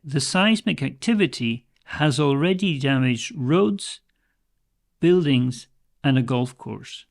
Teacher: when we have a list of three the first two are high and the third one drops down